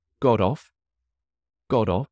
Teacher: With this phrasal verb, the T likes to become a D.